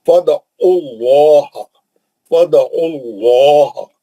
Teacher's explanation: لام پہ کھڑا زبر ہے، کھینچ کے 2 حرکت پڑیں گے